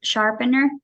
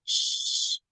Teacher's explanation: So its point of articulation is palatal.